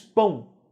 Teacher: Pão, o O não é pronunciado como O. Você não diz pão-O, nem diz pão-O. Você diz pão, né? Como se fosse um U bem fraco. Então, vogal A, semivogal U, né?